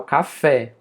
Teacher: Eu coloco mais força, mais entonação lá no final. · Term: oxítona